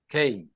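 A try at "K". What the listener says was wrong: হচ্ছে না। আরো জোরে উচ্চারণ করেন এবং মুখ থেকে একদম বাতাস বের করে খেই।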